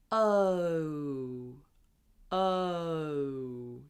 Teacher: So this sound in goat and no, it's called a diphthong, which means it has 2 sounds in it.